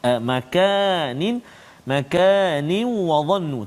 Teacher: Bacaan dia dengan dengung 2 harakat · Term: idgham ma'al ghunnah